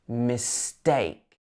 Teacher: So this is a light syllable at the beginning. Mistake. We emphasize the take.